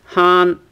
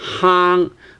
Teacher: Han, your tip of the tongue is touching the top of your mouth, but then in the case of hang, it's actually more like the sound from your throat. So the tip of the tongue is actually not touching the top of your mouth.